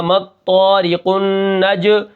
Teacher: غنہ ہوگا، ٹھیک ہے، کیونکہ نون مشدد ہے، مطارق النج، پھر جیم کے اوپر قلقلہ ہے، تو اس کو میں جیم کو قلقلہ کروں گا